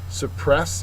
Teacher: suppress uh is a verb second syllable is accented